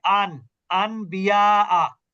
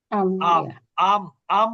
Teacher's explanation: তাহলে আমরা নিয়মটা কি, নুন সাকিন অথবা তানবিনের পর যদি বা অক্ষর আছে, মাত্র একটা অক্ষর বা, তাহলে ওই নুন সাকিন যুক্ত নুনকে মিম দ্বারা পরিবর্তন করে গুন্না সহ পড়তে হবে এটা। অথবা যদি তানভিনের পরে যদিও বা আসে, তাহলে তানভিনের মধ্যে যে লুকায়িত নুন সাকিন আছে, ওই লুকায়িত নুন সাকিনের মধ্যেও মিম উচ্চারণ করে গুন্না করে পড়তে হবে। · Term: ইকলাব